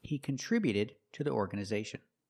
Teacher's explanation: the T before the ED is between vowels, so it's a fast D.